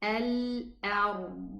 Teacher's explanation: And this is why, for example, we say the Dad has no qalqala